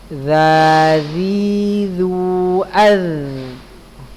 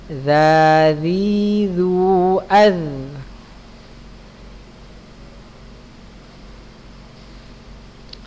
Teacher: Kemudian letak huruf za ya, za punggung ujung lidah pada posisi menempel di ujung dua gigi seri atas ya.